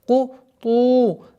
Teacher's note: Долгота в размере двух огласовок даммы над буквой та.